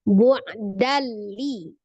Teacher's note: Idgham bila gunnah. Idgham artinya dilebur, ditasdidkan. Berarti ditasdid ke huruf lam. Bila tidak dengan gunnah, dengung.